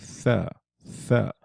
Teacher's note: With the tha, you have to put your tongue against your upper front teeth, except you go underneath them, but there's contact with the lower edge of the upper front teeth when you're saying tha, tha.